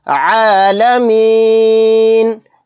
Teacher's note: عالمین، آیت کرنے کی صورت میں نون کو ساکن بنا دیں گے۔ عالمین، یہاں پر عین کو حلق سے اچھے سے نکالنا ہے